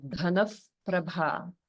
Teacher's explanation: So Visarga is coming in the middle of a word, but we treat it just like anywhere else in the middle of a line. So the Visarga in Dhanav Prabha is pronounced like if, the if sound, because it's followed by the pa sound.